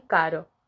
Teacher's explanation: cuando la vibración es única la consonante es floja